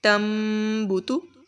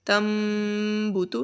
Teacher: غنہ کریں گے ادھر، تم بوتو، ناک میں آواز لے کر جائیں گے